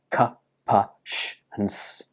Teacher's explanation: If you touch your throat and say these words, k, p, sh, and s, you can't feel any vibration in your throat. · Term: unvoiced consonant sounds